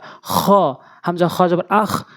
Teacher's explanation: হলকের শেষ থেকে উচ্চারণ করব আমরা